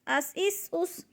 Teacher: جب سین کو ادا کرنا ہے تو سیٹی کی آواز نکلے اور قلقلہ نہیں کرنا، جلدی ادا کرنا ہے، اس اس اس۔ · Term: سیٹی والے حروف